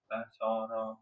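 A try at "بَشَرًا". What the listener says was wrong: Nah, kayaknya masih agak tebel ya. Bukan tebel ya. Ini ya apa namanya? Bibirnya masih agak lebar dikit.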